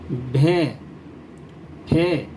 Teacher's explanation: یہاں اس سبق میں ان حرفوں کو مفرد حرفوں کی طرح یعنی الف بے پے تے ٹے کی طرح ایک ہی آواز میں پڑھیں گے۔ یہاں الگ سے کوئی ہے کی آواز نہیں نکلے گی، اور ان کو نہ زیادہ کھینچ کر پڑھیں گے اور نہ اس میں جھٹکا دیں گے۔ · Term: حروف مخلوطہ